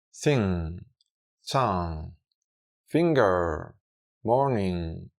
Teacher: hacer una N, pero moviendo la lengua hacia la posición de la G y quedarse ahí, haciendo que el aire salga por la nariz sin llegar a explotar o desarrollar el sonido de la G. Entonces, hacemos una N que termina en la G, pero sin desarrollarla y sale el aire por la nariz. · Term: ng sound